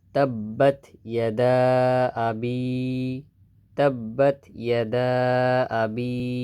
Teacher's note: জেরের বাম পাশে জজমওয়ালা ইয়ে আছে, তার মানে এখানে এক আলিফ টানবো